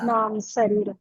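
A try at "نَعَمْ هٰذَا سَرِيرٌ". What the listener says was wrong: नहीं बच्चे आप हाजा नहीं पढ़ी, नाम हाजा सरीरुन,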